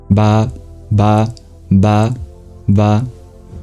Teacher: You just have to know its position at the lips. It's voiced, and you occlude it. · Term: the sound ba